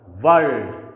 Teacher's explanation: this R is preceded by this consonant L which produces a consonant sound, so it will be kept silent while pronouncing this word